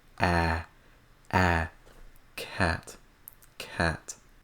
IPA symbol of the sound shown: æ